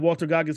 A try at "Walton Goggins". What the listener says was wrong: Walton, not Walter. Walton. Walton.